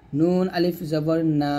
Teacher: নুন জিহ্বার আগা উপরের তালুর সঙ্গে লাগবে